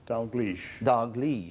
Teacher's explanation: So the stress is on the second syllable.